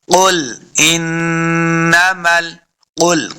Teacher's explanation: قاف کو موٹا پڑھنا ہے، قاف حروف مستعلیہ سے ہے